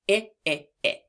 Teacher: to make the I sound, you open your mouth slightly and you keep your tongue relaxed near the bottom of your mouth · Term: short I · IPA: /ĭ/